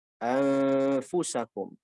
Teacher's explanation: fa di bibir bawah ketemu gigi atas, maka bunyi ikhfanya di situ